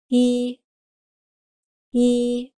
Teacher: Since it’s a long vowel, it’s an extended sound and it takes time of two counts